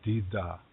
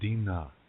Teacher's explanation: Dakota people say dida, Nakota people say dina.